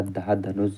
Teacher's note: दंत वत्सर्य महाप्राण घोष व्यंजन वर्ण का उदाहरण